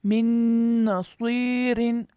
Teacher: नून की वजह से नून साकिन का इदगाम बिल गुन्ना हुआ, नाक में आवाज़ लेके गए।